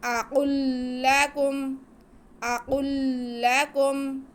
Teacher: آگے کاف پہ پیش ہے، میم ساکن ہے، ان کو نہیں کھینچنا۔